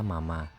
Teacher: M adalah bilabial karena dibuat dengan menutup dua bibir dan mengatakan udara melalui hidung. Mama bibir atas bertemu dengan bibir bawah.